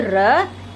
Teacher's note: लुंठित, जिन व्यंजनों के उच्चारण में जिह्वा बेलन की तरह लपेट खाकर तालु का स्पर्श करती है और जिह्वा की नोक वर्ष पर बार बार ठोकर मारती है, वे लुंठित कहलाते हैं, जैसे र और र के ऊपर जो वापस र चढ़ता है डबल र, वो व्यंजन लुंठित है।